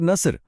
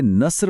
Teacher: हर्फ सौद को मोटा और भारी पढ़ा जाता है। जबकि सीन की आवाज बारीक सीटी जैसी है। अगर नस्र यानी मदद को गलती से नस्र पढ़ दिया जाए तो इसका मतलब बन जाता है गिद्ध।